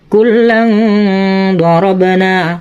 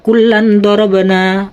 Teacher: wajib tanwinnya dibaca dengung serta samar ya. Jadi bacanya gini, kullang dorabana, jadi tidak boleh dibaca kullan dorabana. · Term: ikhfa bi gunnah